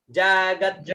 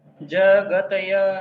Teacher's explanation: तय मत बोलिए, त आधा है तो जगत्य